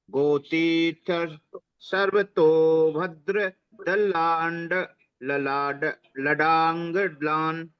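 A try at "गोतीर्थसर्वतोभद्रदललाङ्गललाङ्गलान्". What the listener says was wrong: हाँ, ये ना ड नहीं है, अंग है, अंग। लांग, लांगल, लांगलान, जो हम बोलते हैं ना, कख गंग, कख गगा बोलिए आप सर, राम सर, कख गगा बोलिए।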